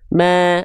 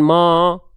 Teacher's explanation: Harokatnya baris atas. Selagi dia harokatnya baris atas, ya, keluar dengan bunyi vokal A, tipiskan pelafalannya. Ma, bukan mo, ma, agak senyum sedikit.